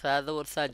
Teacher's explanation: জিব্বার আগা উপরে দুই দাঁতের আগার সঙ্গে লাগবে, অটোমেটিকলি চলে আসে সা।